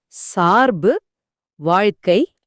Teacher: நாக்கு ர் அல்லது இழ உச்சரிக்கும் இடத்தில் நிற்காமல் அடுத்த எழுத்தை உச்சரிக்க வேறு இடத்திற்கு வழிக்கு செல்கிறது. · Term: வேற்றுநிலை மெய்மயக்கம்